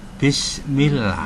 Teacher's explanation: kalau lafadz Allah sebelumnya berharakat kasrah maka Allah dibaca tipis